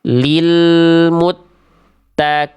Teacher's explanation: Karena huruf qafnya tidak menjadi qaf, tapi huruf qafnya dibaca menjadi kaf.